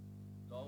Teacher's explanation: ল হচ্ছে খ নম্বরের পার্শ্বধ্বনি। ল উচ্চারণে জিহ্বা পাশে বায়ু বের হয়।